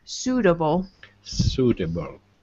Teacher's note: we have this UI, which is strange, but it's just an OO sound.